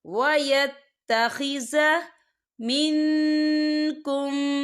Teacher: نون ساکن کی آواز کو ناک میں چھپائیں گے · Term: اکفا